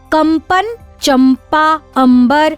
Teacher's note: यदि अनुस्वार प वर्ग के वर्णों से पहले उच्चारित हो रहा है तो यहाँ प वर्ग के पंचमाक्षर म का प्रयोग होता है